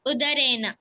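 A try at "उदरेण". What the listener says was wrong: ಟವರ್ಗದಲ್ಲಿ ಬರುವಂತ ಣ ಯೂಸ್ ಮಾಡಬೇಕು ಉದರೇಣ ಬಿಕಾಸ್ ರೇಖ ಇದೆ ಅಲ್ಲಿ ರ ಇದೆ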